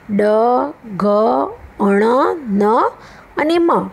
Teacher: મુખનો માર્ગ, મોંનો માર્ગ જે આપણો છે તે અવરોધના કારણે બંધ થઈ જતાં હવાનું મોજું નાક દ્વારા પસાર થાય ત્યારે અનુનાસિક ધ્વનિ સંભળાય છે.